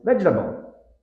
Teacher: us native speakers reduce it into three with the stress on the first